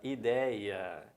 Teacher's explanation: Na palavra ideia, a sílaba tônica não é a última, não está em posição de oxítona.